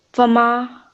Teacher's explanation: the alif here is preceded by a fatha, and therefore this alif madda we would prolong for 2 seconds